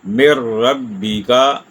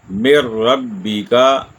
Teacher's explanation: غنہ بھی نہیں ہوا، آواز ناک میں بھی نہیں گئی، نون ساکن کے بعد را ہے، ہم نے ڈائریکٹ میم کو را سے ملا دیا، اور یہاں رکنا بھی نہیں ہے، مر ربی کا۔ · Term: ادغام